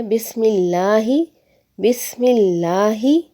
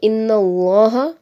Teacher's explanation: اگر لفظ اللہ سے پہلے زیر آ جائے تو ہم لفظ اللہ کو مرقق یعنی کہ باریک پڑھیں گے، جیسا کہ ہے مثال دی ہوئی ہے بسم اللہ، بسم اللہ، لفظ اللہ سے پہلے زیر آ رہی ہے تو ہم نے لفظ اللہ کو مرقق یعنی کہ باریک پڑھا۔